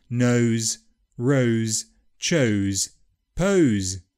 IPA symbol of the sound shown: əʊ